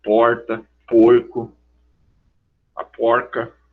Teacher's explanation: O R retroflexo ele não se produz no início. Ele tem que se produzir no meio.